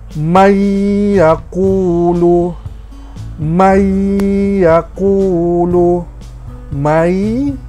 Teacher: Kita tidak sebut sudah nun tu, kita akan terus masuk kepada ya, may. Dan kita panjangkan sedikit 2 harokat. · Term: idgham